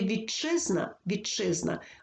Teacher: Т під впливом шиплячого вимовляється як шиплячий чи і тому слові вітчизна вітчизна вимовляємо чи подовжений Якщо ж